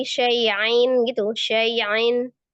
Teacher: dia samar tapi tidak merubah huruf hamzahnya menjadi ain. Jadi yang samarnya itu bunyi nun sukunnya, bukan hamzahnya.